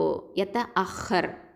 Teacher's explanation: இந்த ஹா அப்படிங்கிறது இருக்குது பார்த்திங்களா, இது வந்து அதனல் ஹல்கு, மேல் தொண்டை எழுத்து. அது மட்டும் இல்லாமல் இது தஃப்ஹீம், வல்லினமான எழுத்து. ஓகேவா? அதனால் இதை வந்து நம்ம எப்படி ஓதுவோம் அப்படின்னு பார்த்திங்கன்னா, ரொம்ப வந்து ஸ்ட்ராங்காக ஓதணும்.